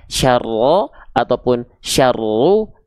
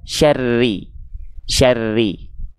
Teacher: huruf ro-nya di sini nggak kita baca dengan vokal o, tapi dia dibaca harus dengan vokal i karena mengikuti si harokatnya.